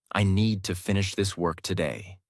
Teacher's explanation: Need, finish, work are strong. Other words are softer.